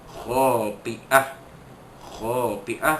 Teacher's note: kha itu mad asli, dua harakat panjangnya, khati'ah. Khati, asalnya khati'atin, kita matikan jadi khati'ah.